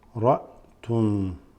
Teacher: This is a sukoon over the hamza, so it's a straight stop after the ra.